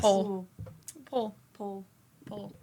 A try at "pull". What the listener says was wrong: I heard the pole. I I hear pole. Like I dance on a pole.